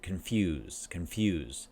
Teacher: when I say that, confuse, there's a Y sound.